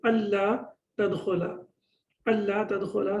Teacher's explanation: And an la, basically what happens, the noon gets dropped and the la gets tashdid · Allah tadkhula. So it was basically an la, noon has been dropped and then it has been replaced with the tashdid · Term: idgham without ghunna